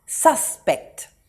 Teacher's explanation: the emphasis is on the first syllable sus